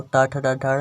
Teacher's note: टा वर्ग में आता है जो टा ठा डा ढा, इसको मूर्धन्य बोला जाता है।